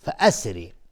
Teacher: فأسری را اینجا حکمش ترقیق است چون کسره داره